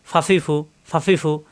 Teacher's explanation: উপরের দুই দাঁতের আগা নিচের ঠোটের পেটের সঙ্গে লাগাইয়া ফা ফা নরমকার উচ্চারণ জবর আসলে ফা জের আসলে ফি পেশ আসলে ফু ফাফিফু ফাফিফু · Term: 14 নাম্বার মাকরাজ